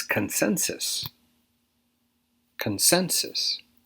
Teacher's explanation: Stress is on the second syllable here.